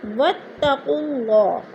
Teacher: انتم بہ مؤمنون، واتقوا اللہ، اللہ پر پڑھا جائے گا کیونکہ اللہ سے پہلے لفظ قاف کے اوپر پیش ہے تو اللہ کو پر کر کے پڑھیں گے